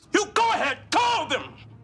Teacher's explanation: uses the full breadth of his vocal range, rising to a speaker breaking shout